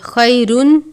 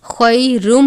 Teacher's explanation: یا ساکن سے پہلے زبر ہے، یا لین، خیرم، تنوین کے بعد میم مشدد ہے، تنوین کو میم مشدد سے ملا کر غنہ کر کے پڑھیں گے۔